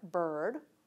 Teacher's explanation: When the consonant is an R, even a stressed syllable can have a syllabic consonant as its nucleus. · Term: syllabic R